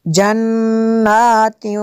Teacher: नून में शद्दत है यहाँ पे गुन्ना करेंगे